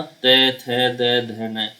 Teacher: तो हर शब्द हर व्यंजन के साथ आपकी जीभ का स्पर्श दांतों से जरूर होता है।